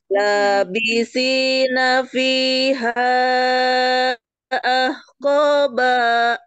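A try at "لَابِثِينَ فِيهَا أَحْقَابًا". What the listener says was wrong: Sedikit lagi Bu, kurang panjang sedikit lagi.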